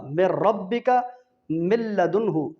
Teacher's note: یہ یرملون کے حروف میں سے لام میں اور را میں غنہ نہیں ہوتا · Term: ادغام بلا غنہ